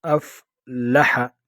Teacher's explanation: افلح لام باریک پڑھیں گے